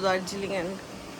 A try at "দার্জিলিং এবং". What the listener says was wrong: দার্জিলিং এবং দার্জিলিং এন্ড পড়লি তুই? ডাইরেক্ট মানে অটোমেটিক্যালি বাংলা দেখলি ইংরেজিটা মাথায় আসছে, বাংলা উচ্চারণটা আর বের হচ্ছে না।